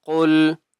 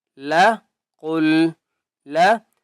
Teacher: قاف کو موٹا کر کے پڑھیں گے، لام کے اوپر تشدید ہے اور مضبوطی کے ساتھ پڑھیں گے۔